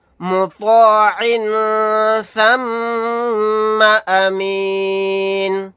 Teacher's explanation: میم مشدد ہے، یہاں پر غنہ کر کے پڑھیں گے · یہاں پر طوا کو موٹا یعنی پر پڑھیں گے